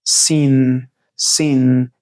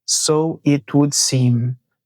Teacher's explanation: ele termina a palavra com a língua colada no céu da boca